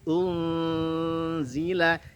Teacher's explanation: ikhfanya tipis karena zai huruf tipis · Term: ikhfa hakiki